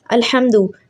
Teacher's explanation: अल्हम्दु हा हलक के दरमियान से पढ़ेंगे